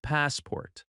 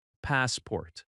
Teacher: The stress is on the first syllable. Pass-port. That first part is stronger and a little longer.